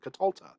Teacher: The accent has shifted to the second to last syllable